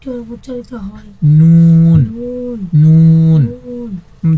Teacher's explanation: জিহ্বার আগা তার বরাবর উপরের তালুর সঙ্গে লাগাইয়া একটি হরফ উচ্চারিত হয়।